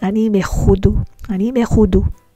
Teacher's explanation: So we pronounce the mem as me because it is before a guttural letter. Ha. That is pronounced from the throat.